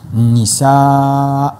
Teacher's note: Lorsqu'on veut marquer une pause, on s'arrête sur le Hamza, on fait le prolongement de deux. Donc on lit la Fatha et on fait le prolongement des deux.